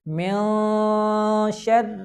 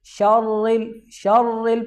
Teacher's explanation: آگے شر کے اندر را باریک پڑھا جائے گا، کچھ لوگ اس کو موٹا پڑھ دیتے ہیں